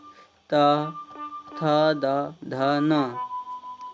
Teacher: दांतों के तले से निकलते हैं